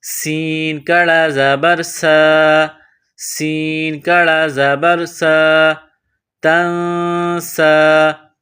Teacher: اس کے بعد سین، سین کو باریک پتلا کر کے پڑھیں گے، سین میں سیٹی کی آواز پیدا کریں گے۔ سین پر کڑا زبر ہے، ایک الف کے برابر کھینچ کر پڑھیں گے سین کڑا زبر سا، سین کڑا زبر سا، تنسا۔